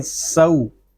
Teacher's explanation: یہاں واو لین کو ہم کھینچ کر نہیں پڑھیں گے. اس کو سو یا سو اس طرح نہیں پڑھیں گے، اس کو پڑھیں گے سو.